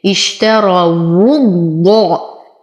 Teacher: أصبر على الشين أعطيها صفة التفشي اشترى، أفخم الراء لأنها مفتوحة اشتروا. ولاحظ أن الواو هنا مضمومة فهي تخرج من الشفتين